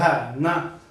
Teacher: अब न बोलते ही तो आपकी आवाज देखो दांत से तो निकल रही, साथ में नासिका से भी निकल रही है